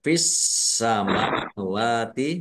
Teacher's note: Langsung masuk ke huruf berikutnya yaitu sin, ditandai sinnya ada tasdidnya. Sinnya dibaca double. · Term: alif lam samsiyah